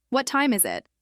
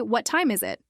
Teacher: with that natural falling intonation, it feels complete